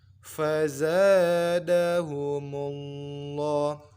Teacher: lafaz Allah, lamnya kita baca mat 2 dan ditebalkan sebab sebelumnya berharokat dhammah.